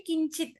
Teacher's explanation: అవే రూపాలు ఇక్కడికి వచ్చేస్తాయి కిం కే కానికి మాత్రం కిం అని ఉన్నప్పుడు అక్కడ అనుస్వారం ఉంది కాబట్టి అది కాస్త అనునాసికంగా మారిపోయి కించిత్ అయింది